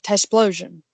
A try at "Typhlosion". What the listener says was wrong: Did you just say Tysplosion? Typhlosion. There's no S. Typhlosion.